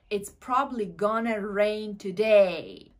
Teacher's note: bu yerdagi going to gonna ga o'zgarib ketyapti